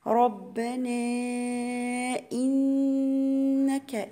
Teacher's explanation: النون المشددة هي غنة مقدار حركتين